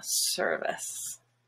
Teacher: The stressed part is purple, but the I here is just a schwa